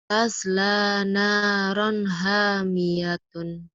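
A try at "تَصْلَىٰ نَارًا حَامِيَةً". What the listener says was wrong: Tasla naran hamiyatan bukan hamiyatun ya. Tasla naron. Tasla naron hamiyatan.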